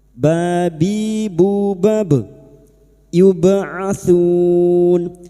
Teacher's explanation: ba sukun yang mati asli di tengah kalimat qalqalah sugro jangan lupa dipantulkan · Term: qalqalah sugra